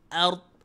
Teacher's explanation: ada ra, ada dad berada dalam kondisi yang menahan, ra dalam kondisi yang getaran. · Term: sukun mendatang